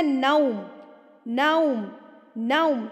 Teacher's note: زبر پڑھتے ہوئے آپ کے ہونٹ کھل جائیں گے اور واو پڑھتے ہوئے آپ کے ہونٹ بالکل گول ہو جائیں گے